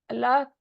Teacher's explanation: लफ्ज अल्लाह का लाम मोटा पढ़ा जाएगा। क्यों? क्योंकि उससे पहले जबर के साथ हमजा है। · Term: लाम जलाला